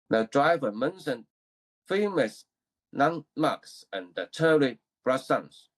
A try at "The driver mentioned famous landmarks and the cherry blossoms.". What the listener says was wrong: It was good, but you kind of broke this into two different words. It's not two words, it's one word. Landmark, right? It's one word.